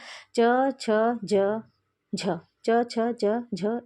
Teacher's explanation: ये स्पर्श संघर्षी व्यंजन है